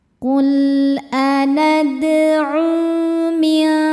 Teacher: Sebab ada waw sukun sebelumnya berharokat dhammah. Cara bacanya, huruf ain dipanjangkan 2 harokat. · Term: mad tabi'i dhahiri